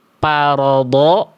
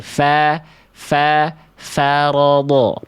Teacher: Ujung gigi seri atas kita berjumpa dengan bibir bawah bagian dalam yang basahnya mengalirkan nafas. Ya, menghembuskan angin. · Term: huruf fa